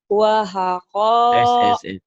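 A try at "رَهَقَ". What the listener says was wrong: Ro-nya ketuker wau, wau-nya ketuker ro. Rohaka.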